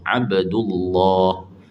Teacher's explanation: mesti ditebalkan lam tu pada lafzul jalalah kalau sebelumnya baris atas ataupun baris depan